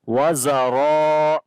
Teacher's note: Ra we read in heavy sound and also we long.